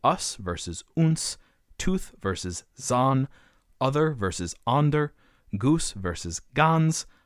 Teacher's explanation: there is an N present in German where there's none in English